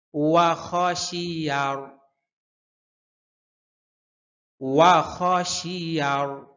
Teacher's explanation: আপনি খেয়াল করবেন যে আপনার ঠোঁট গোল হচ্ছে কিনা, একদম রুই মাছের মতো ঠোঁট গোল হবে। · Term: ওয়াও